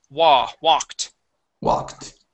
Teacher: it is an aw sound, but that L is going to be silent.